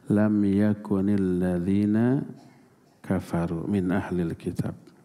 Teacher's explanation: Lam yakun ada huruf nun yang mati, terus huruf selanjutnya juga mati. Maka nunnya yang tadinya disukun menjadi dikasrah, lam yakunil ladzina kafaru min ahlil kitab.